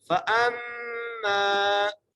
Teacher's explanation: حمزہ کو میم سے ملانا ہے، میم پر غنہ کرنا ہے. فَأَمَّا، میم کو ایک لفظ کھینچ کے بھی پڑھنا ہے.